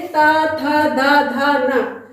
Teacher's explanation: जब हम इन सब शब्दों को बोलते हैं तो हमारी जीभ थोड़ी उठ के किससे टकराती है? दांतों से टकराती है, इसीलिए इन व्यंजनों को हम दांतों का स्पर्श करते हैं। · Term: तवर्ग